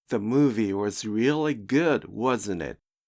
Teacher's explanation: usually has a falling pitch when used for confirmation, but if the speaker is excited or emotional, the pitch may rise.